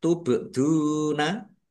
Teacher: Ba sukun bacaan qalqalah dibaca memantul. ditampakkan pantulannya.